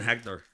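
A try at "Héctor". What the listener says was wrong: Hector. You can't pronounce the H.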